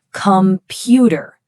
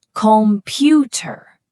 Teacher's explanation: In American English, we put all the energy on that one middle syllable, right? Computer.